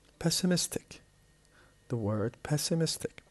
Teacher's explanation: The word pessimistic has 4 different syllables, and the stress is on the third one because we have IC, and IC changes the stress to the syllable before the last.